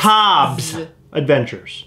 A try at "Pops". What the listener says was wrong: Pops. You keep saying with a B.